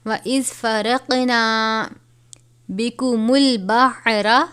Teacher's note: موٹا قاف ہے، قلقلہ بھی ہوگا یہاں پر، حرف قلقلہ میں سے ہے.